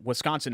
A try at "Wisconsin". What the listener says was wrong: You say it Wisconsin. It's Wisconsin. But you say Wisconsin. You say it like it's Wes. Like Wesley, and then Conson. It's Wisconsin.